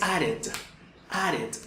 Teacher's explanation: Esto tiene un schwa sound ahí que ubica la pronunciación de la E final entre la E y la I del español